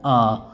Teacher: जिन स्वरों के उच्चारण में जीभ का मध्य भाग काम करता है उसे मध्य स्वर कहते हैं